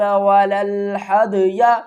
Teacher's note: قلقلہ ہو رہا ہے، دال کو ہم ہلا کر پڑھیں گے۔